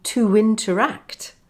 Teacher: two examples of intrusion in to interact, where I inserted a w sound